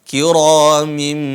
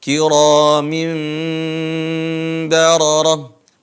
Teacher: Membalikkan suara nun menjadi huruf mim, tapi tanpa menekan. Kiramin, hanya bertemu bibir ke bibir atas, bibir bawah. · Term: iklab